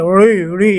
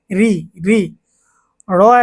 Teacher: এখানে আমরা র টাকে পাতলা আকারে উচ্চারণ করব। ঋ ঋ এরকম না যে ঋ ঋ এরকম মোটা করবো না।